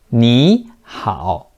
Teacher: when two third tones are together, the first one turns to the second tone, but is still written in the third tone.